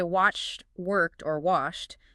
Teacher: The first is a hard, sharp T sound. When you say watched, worked, or washed, you are ending the word with a T, despite the fact that it is spelled with a D.